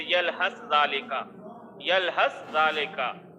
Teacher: سا کا ذال میں ادغام ہو رہا ہے، تو سا جو ہے وہ مدغم ہے اور ذال جو ہے وہ مدغم فی ہے۔ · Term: ادغام متجانسین